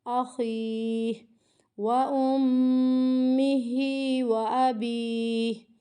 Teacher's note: یہاں پہ مد عارض کا قاعدہ ہو رہا ہے کہ آخری حرف ساکن پیچھے حروف مد، تو یہاں پہ مد عارض 3 الف کی مقدار کے برابر کھینچ کر ہمیں یہاں پر وقف کرنا ہے۔